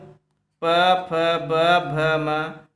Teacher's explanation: प फ ब भ म। दोस्तों इसका उच्चारण स्थान दोस्तों ओष्ठ है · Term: प वर्ग